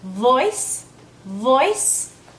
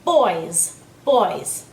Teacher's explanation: in order to pronounce the V sound correctly you need to have your bottom lip pressed against your top teeth okay whereas the B sound is pronounced with lips only no teeth